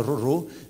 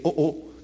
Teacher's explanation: Teroro, tout au centre de la Polynésie, on a roro, mais au marquis, c'était oo. D'accord, le R devient une glottale